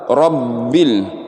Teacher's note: kalau dia huruf ba, bibirnya tuh bergetar